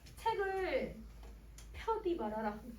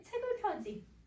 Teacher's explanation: 구개음화가 없으니까 D를 그대로 발음을 한 거예요